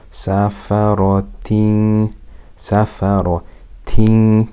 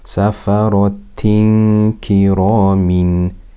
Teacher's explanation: So that means we must hide it with ghunna for two harakat. We must hide the tanween sound with ghunna for two harakat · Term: ikhfa